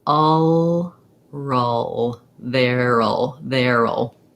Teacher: you keep the back of the tongue down and just lift the front of the tongue for the l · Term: syllabic L